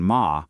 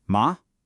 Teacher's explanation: The second tone, ma, rises up kind of like you're asking a question.